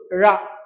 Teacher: நாக்கு மேல்நோக்கி வளைந்து வருடும்